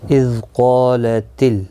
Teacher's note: اذ قالت اذ ذال ساکن کو ہلانا نہیں، قاف مستعلیہ ہے، پر پڑھا جائے گا. اس کے ساتھ الف بھی آیا ہے، یہ بھی پر پڑھا جائے گا.